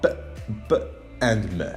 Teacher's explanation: Bilabials are b, b, and m. They are the sounds that are produced by blocking the air by bringing the two lips together.